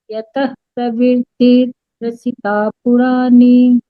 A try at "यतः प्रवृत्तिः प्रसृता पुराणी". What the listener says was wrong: ये है जो फोर्थ वाला श्लोक है ना, इसमें आपको विसर्ग को फ बनाना है आता, ये रह गया यहाँ।